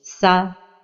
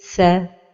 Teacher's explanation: Les erreurs de prononciation de la lettre ثاء avec la voyelle fatha, c'est d'emphatiser la voyelle comme ceci, tha, ou bien de l'amincir comme ceci, thé, et la prononciation correcte est tha.